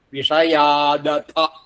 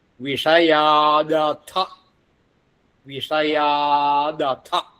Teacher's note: പക്ഷെ അത് വേറൊരു പദമായിട്ട് കൂടിച്ചേർന്ന് വരുമ്പോൾ ഈ ത എന്നുള്ളത് ദ ആയി മാറും. ഖരമായിട്ടുള്ള തകാരം മൃദുവായിട്ടുള്ള ദകാരമായി മാറിയിട്ടാണ് അടുത്ത അഥ എന്നുള്ളതിൻ്റെ കൂടെ ചേരും. അപ്പൊ വിഷയാത് അഥ, വിഷയാദഥ.